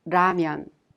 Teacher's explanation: there isn't an exact match to the 리을 sound in English, but you can consider it a sound in between the L sound and the R sound